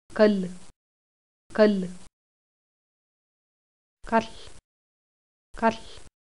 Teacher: A lateral fricative is essentially the same as a fricative, but the air passes out the side of the articulator rather than out the front. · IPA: kal